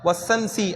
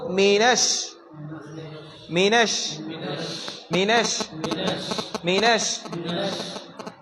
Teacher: அப்ப எல்லாத்துக்குமே சா போட்டுருவாங்க, அது தப்பு. அப்போ ஷீன் 2 பற்கள் ஒட்டி காற்றை தள்ளி ஷீன். அப்போ மீனஷ் மீனஷ் மீனஷ் மீனஷ் ஷை தான் சொல்லாமா?